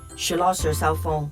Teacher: when you speak in the sentence she lost her cell phone the pitch of the word cell phone goes down to show that's the end of the idea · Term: intonation